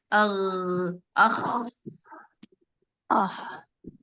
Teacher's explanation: जब आप गईन के मखरज पर खा की आवाज निकालेंगे, बिल्कुल उसी जगह पे रख के, तो आपकी आवाजों में खर्राटे की आवाज आएगी। देखें, एक मैं दोनों को पढ़ के बताती हूँ।